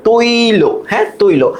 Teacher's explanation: তাইলে ত এর সাথে ঐ কারকে ভাঙ্গালে আগে ত এর সাথে ওকারটা যুক্ত হবে। তারপর ই হবে তই